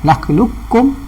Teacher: Sama ada kita masuk terus nakhluqukum dengan bacaan nipis tanpa ada ketebalan ataupun makhraj qaf langsung, atau kita baca dengan ekor qaf kepala qaf ekor kaf nakhluqukum. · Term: idgham kamil